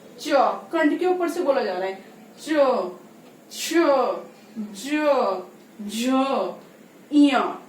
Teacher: इसी प्रकार से जो चवर्ग है वो ठीक कंठ के ऊपर वाले भाग से बोला जाता है, जिसको हम बोलते हैं तालव्य।